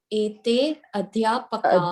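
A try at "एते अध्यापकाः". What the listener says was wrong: Very good. Ete Adhyapakaha. That is the answer.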